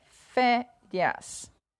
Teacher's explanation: a palavra férias o fé penúltima sílaba mais forte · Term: paroxítonas